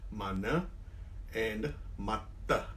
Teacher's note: I am pronouncing the last syllable a little bit stronger